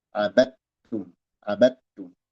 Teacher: Abattum dal idgham ke ta. Jadi bacanya dari ba langsung ke ta. Abattum. Dal hilang sama sekali. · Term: idgham mutajanisain shagir